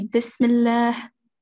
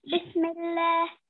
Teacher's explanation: on scene, we have sukoon. Okay, so don't spend too long on the scene.